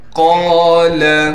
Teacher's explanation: قاف کے بعد لام ہونے کی وجہ سے قاف کو ایک الف کی مقدار کھینچیں گے اور قاف کو موٹا کر کے پڑھیں گے